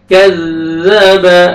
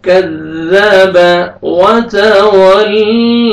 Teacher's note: ذال پڑھنا ہے، زا میں آپ کا ساؤنڈ نہیں جانا چاہیے، زور سے نہیں پڑھنا، نرمی سے ادا کریں گے ذال کو